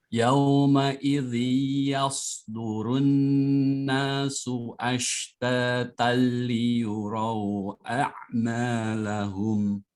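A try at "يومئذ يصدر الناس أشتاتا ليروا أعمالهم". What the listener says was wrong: Baik, tahan lebih lama lagi yauma idzinnya Pak. Samakan porsinya seperti gunnah musyaddadah.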